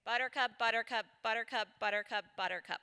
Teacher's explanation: just that one word buttercup there's a lot going on so our lips have to come together to make that B sound